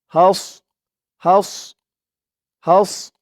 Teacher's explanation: না হাস বললে কিন্তু এই সদের জায়গায় সিনের উচ্চারণটা চলে আসবে মুখটা একটু ভরপুর হয়ে যাবে সদের উচ্চারণ করার সময়